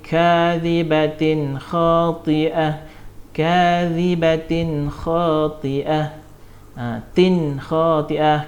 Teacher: Tak dengung sebab tanwin bertemu dengan huruf izhar halqi, iaitu huruf kha. Bacaan dia terang dan jelas.